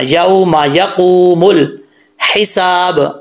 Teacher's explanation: इस मीम को लंबा नहीं करना